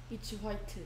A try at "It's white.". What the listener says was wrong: White? White겠지. H 소리 안 난다.